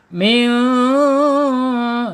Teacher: Dibaca samar dan ditahan dulu dua harakat. · Alisan ya yaitu di lisan kita ujung lidahnya menyentuh langit-langit yang depan mendekati gigi pangkal gigi seri